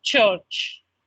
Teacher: You have another which comes in, which is church. This is the t sound of the alveolar with the ch sound of the shoe coming together to become church